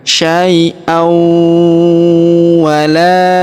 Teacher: Huruf la kita panjangkan dua harakat karena alif di depannya · tanwin an langsung melebur ke huruf wau ya ditahan dan ditekan sai wala ya kita panjangkan huruf la.